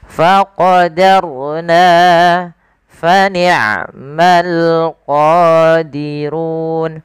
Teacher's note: dia menebalkan huruf ro-nya, tapi danya tetap tipis. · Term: ro tafkhim